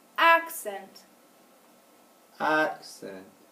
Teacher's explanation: we said the first syllable longer louder and higher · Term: accenting that syllable